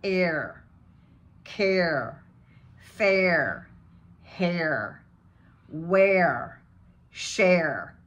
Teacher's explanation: He says he even goes there with no R's at all. But when he does the standard American accent, he has to bring in that hard R.